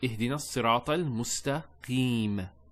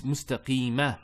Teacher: There's a fatha there, but we don't pronounce that fatha when we stop. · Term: sukoon